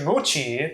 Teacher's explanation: in Japanese, you don't get [t] before [i] natively, only in front of other vowels. Instead, you get [tʃi]. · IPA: [motʃi]